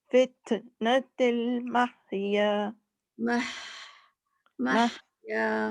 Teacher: ہاں کو تھوڑا سا لمبا کریں گے تو پھر ہوا کی آواز آ ہی جاتی ہے, تھوڑا سا لمبا کرنا پڑتا ہے.